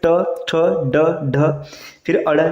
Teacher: ट वर्ग है इसका उच्चारण स्थान होता है मूर्धन्य